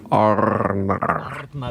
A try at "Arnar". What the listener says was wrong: Yeah, it's probably a little hard to roll the R's, right?